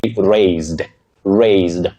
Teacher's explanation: With that voiced sound Z for the letter S in that word.